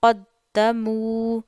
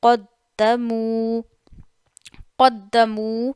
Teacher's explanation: قَدَّمُوا قَدَّمُوا، تو یہاں پہ واو مدہ ہے، واو ساکن سے پہلے پیش ہے تو آپ نے واو مدہ کرنا ہے